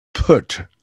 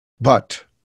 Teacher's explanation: the plosive sounds voiceless and voiced